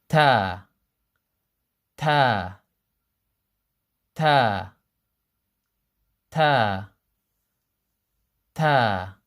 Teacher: ta comes from the same place as the T in the English language, except that it's more flat on the roof of the mouth. It's more flat than the English ta.